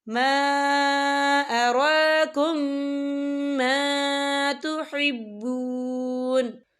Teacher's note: وقف کی صورت میں نون جو ہے ساکن ہو جائے گا